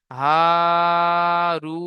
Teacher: ওয়াও সাকিনের ডান দিকে পেশ এসেছে, এটি ওয়াও মাদ্দা হবে। ওয়াও মাদ্দাহকে এক আলিফ পরিমাণ টান দিয়ে পড়তে হয়।